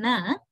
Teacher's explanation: the tip of the tongue and the alveolar which are contacting each other